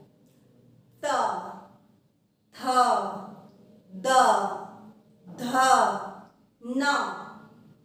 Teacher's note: आपकी जो जीभ है ऊपर वाले दांतों को पीछे से छूती है। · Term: त वर्ग